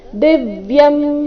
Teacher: ದಿವ್ಯಂ ದಿ ಮೇಲೆ ಆಘಾತ